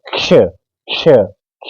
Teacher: हम पहले क की स्वर रहित ध्वनि निकाल लेंगे और उसके साथ षटकोण को जोड़ देंगे